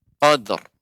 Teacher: Jadi seperti ra-nya itu tertahan. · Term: ra-nya tebal